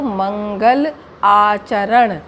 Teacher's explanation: मंगल का आ मिला और आचरण का आ लिया, यहाँ पर दीर्घ आ बना दिया गया